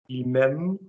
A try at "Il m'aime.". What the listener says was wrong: Lovely.